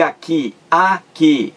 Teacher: uma palavra com duas sílabas. A sílaba mais forte é a última.